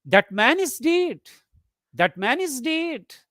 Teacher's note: it expresses surprise you don't believe it that's why you speak it in a rising tone